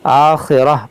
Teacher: हमने वक्फ़ किया तो इस गोलता को हा साकिना बना दिया